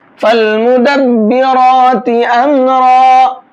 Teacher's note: فالمدبرات امرا، اب یہاں پر فا کو لام میں ملائیں گے اور الف نہیں پڑھا جائے گا۔ مدبرات، را کو پر کر کے پڑھیں گے۔